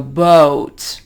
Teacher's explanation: We don't hold the O in one place. Usually you hear American English speakers go boat, and they move the O upward as they say it. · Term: diphthong